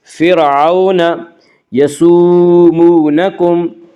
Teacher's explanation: واولین کو نرم آواز کے ساتھ جلدی پڑھیں گے · فرعون یسومونکم، واو مدہ، اور یہاں بھی واو مدہ وہ واو جو ساکن ہو اور اس سے پہلے پیش ہو، واو مدہ کو ایک الف کے برابر کھینچ کر پڑھیں گے